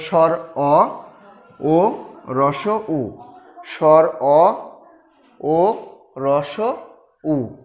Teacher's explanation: স্বর অ ভিতর থেকে উচ্চারিত হয়, অর্থাৎ পেছন থেকে এটি উচ্চারিত হচ্ছে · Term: পশ্চাৎ স্বরধ্বনি